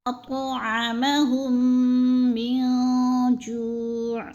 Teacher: اطعمہم من جوع، یعنی یہ جو ہے میم ساکن کے بعد میم مشدد آ گئی ہے، تو ادھر ہم نے میم کو میم مشدد کے ساتھ ملا کر ادغام کرنا ہے، سختی سے جماؤ کے ساتھ پڑھنا ہے